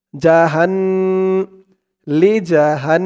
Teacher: গুন্নাহ করতে হবে, ওয়াজিব গুন্নাহ, কারণ হরকতের পরে নুনের উপরে তাসদিদ।